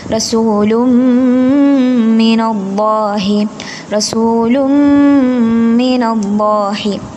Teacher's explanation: തൻവീനിനെ മീമിലേക്ക് ചേർത്തി കട്ടികൂട്ടി മണിച്ച് പാരായണം ചെയ്യാം അപ്പൊ റസൂലും അവിടെ ശരിക്കും റസൂലുൻ എന്നാണല്ലേ പക്ഷേ നമ്മൾ ആ റസൂലുൻ എന്നുള്ള